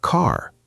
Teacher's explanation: in American English, the R is very strong, very clear. Americans say, car. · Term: strong R